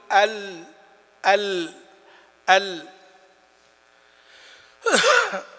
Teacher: فإذا اللام تخرج من أدنى حافة اللسان، تخرج من أدنى حافة اللسان.